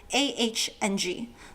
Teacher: the vowel is a little flatter, so it's not wrong with an ONG, but closer to AHNG, like somebody going, ah, and then adding an NG at the end.